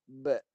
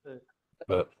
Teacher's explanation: Dah rapat. Rapat bibir, tahan suara kat belakang bibir. Kemudian qalqalah, pantulkan.